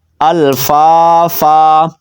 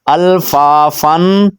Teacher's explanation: لیکن ہم نے وقف کرنا ہے تو دو زبر کو ایک زبر پڑھنا ہے، ساتھ میں الف بھی پڑھنا ہے